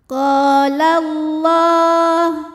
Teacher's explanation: Hukumnya adalah mad tabi'i muqaddar, sebab lam berharokat fathah berdiri. Cara membacanya, lam dipanjangkan 2 harokat.